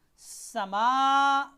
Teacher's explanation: सीन ज़बर सा, मीम खरी ज़बर मा, समा, मीम को खींचना है। सा मा नहीं करना, समा, मीम को खींचना है।